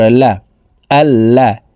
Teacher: একটি চিহ্ন দেখতে পারছেন এই চিহ্নটির নাম হলো তাসদিদ এই কারণে এই লাম হরফটি দুইবার উচ্চারণ করে পড়তে হবে